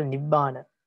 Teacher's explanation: first and second syllables are heavy and the last one is uh light